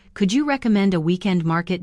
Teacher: Don't punch recommend. Let the last syllable fall like a feather.